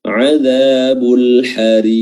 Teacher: Qafnya adalah qalqalah kubra, ya, karena berada pada akhir bacaan.